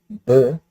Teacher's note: if you say B properly, B, you should feel vibration only at the end, but not at the beginning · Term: plain sound